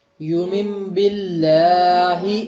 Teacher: یہ واو معروف کی آدھی آواز نہیں تھی بلکہ پوری آواز تھی یو، تو اس کو پوری آواز کے ساتھ پڑھیے